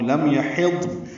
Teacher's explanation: لم یحض میم ساکن پہ اظہار ہے، ضاد ساکن ہے اور اس پہ بھی اظہار ہے، نون ساکن ہے اس پہ بھی اظہار ہے، 2 حروف اکٹھے ساکن ہو گئے.